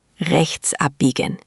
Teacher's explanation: The ch sound in rechts can be a bit tricky. It's that soft back of the throat sound, almost like you're clearing your throat gently.